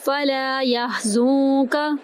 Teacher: فلا لام کو ایک الف کے برابر لمبا کریں گے، یا کو ہا میں داخل کریں گے، یا ہا کی آواز وسط حلق سے ادا کریں گے، زا کو ہم نون میں داخل کریں گے اخفا کے ساتھ، یحزنک۔